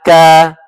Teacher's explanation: Ka keluar dari pangkal lidah yang bertemu dengan langit-langit lembut sedikit ke hadapan dari makhraj huruf qaf sehingga dibaca kaf fathah ka.